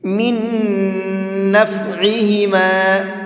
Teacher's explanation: جب بھی کبھی نون ساکن کے بعد میں ایک اور نون آتا ہے تو وہاں دونوں نون کو ایک جگہ مکس کر دیتے ہیں اور پھر غنہ کر کے پڑھتے ہیں